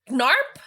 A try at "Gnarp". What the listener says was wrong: The G is silent.